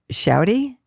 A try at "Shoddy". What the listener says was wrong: Shoddy. Your dad's saying it more probably. Like you keep saying shouty, like shouting.